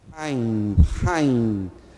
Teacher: É uma gutural rude, é uma gutural forte.